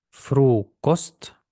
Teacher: тут в нас довга голосна але також наголосна